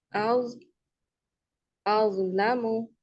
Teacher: ज की साउंड नहीं आनी चाहिए, ज बजिंग साउंड नहीं आनी चाहिए।